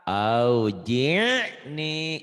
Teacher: Ainnya jangan ke ka. Auji'ni, neken dikit ke tenggorokan, jangan ke aujik nih, jangan ke ka ya